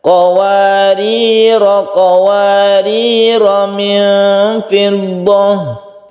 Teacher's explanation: Jadi rohnya ini dibaca pendek apabila kita teruskan.